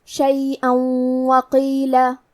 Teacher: یہاں حکم ہے ادغام بغنہ تو ہم یہ حکم کو غنہ اور تشدید کے ساتھ ادا کریں گے، شیئا وقیلہ۔